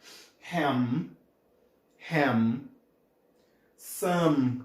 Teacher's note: um som bilabial ou seja ele é feito tocando os seus dois lábios